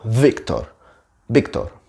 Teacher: in Spanish is just the same one sound for both letters